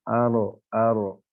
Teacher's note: ujung lidah huruf ro yaitu bertemu dengan langit-langit atas dekat gusi